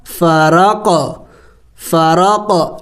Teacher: اس لیے کہ قاف کے اوپر سکون ہے، قاف حروف قلقلہ میں سے ہے تو قلقلہ کرنا ہے، یعنی ہلا کے پڑھنا ہے